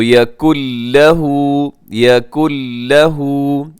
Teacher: يَكُنْ لَهُ اس میں نون سائلنٹ ہو جائے گا، ختم ہو جائے گا کیونکہ یہاں پہ ادغام ہے